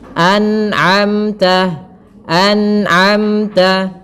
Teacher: harus dijelaskan nunnya dan tidak boleh memantul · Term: izhar